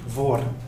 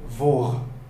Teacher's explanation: on a introduit le R uvulaire à la française. À la française, en quelque sorte.